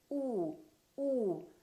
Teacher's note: the lips are rounded